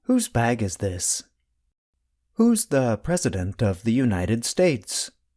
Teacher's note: The contraction and the possessive adjective both sound the same. They are both pronounced with the sound of the letter Z at the end.